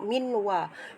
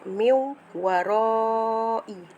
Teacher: hukum nun mati bertemu waw adalah idgham ma'al gunnah